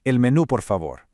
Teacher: Make sure you place a really strong emphasis and accent right there on the U